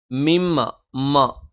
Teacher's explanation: മ രണ്ടു ചുണ്ടും തുല്യമായി അടച്ചുവെക്കണം